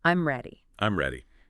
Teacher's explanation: notice how your voice Falls at the end